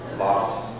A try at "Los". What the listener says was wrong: L이잖아요. L은 우리가 공부했잖아요. 혀가 여기 닿아야 천장에. 로스죠, 로스. 자, 라스는 혀가 여기에 닿지 않잖아요. 이렇게 되기 때문에 라스처럼 들린단 말이에요. 라스.